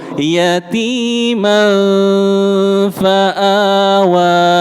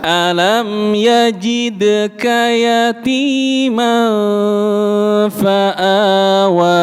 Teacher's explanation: Ikhfa, samarkan, tahan agak lama.